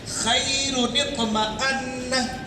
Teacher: खैरुन जो रुन है, रुन में जो एक नून की आवाज़ आ रही है, उसी नून को ज़ेर दे देते हैं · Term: नूने कुतनी